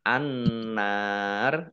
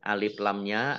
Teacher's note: Alif Lam Syamsiah karena tidak dibaca langsung masuk ke huruf berikutnya